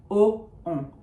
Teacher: Think of it as a vowel base onto which you are adding just nasalizing, as if you had a cold and you were pronouncing a vowel. So on is really just o, but with some nose involved. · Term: nasal vowels